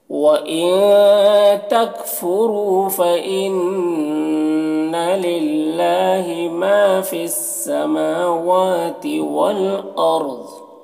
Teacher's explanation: میم اور واو دونوں میں کھڑا زبر ہے، دونوں کو 1 الف کے برابر کھینچیں گے۔ والارض را کو پور پڑھیں گے اور ضاد کو بھی یہاں پر پور پڑھیں گے · للہ اللہ کے لام کو باریک پڑھیں گے